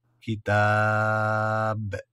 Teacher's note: با میں قلقلہ بھی ہوگا اور یہاں وقف بھی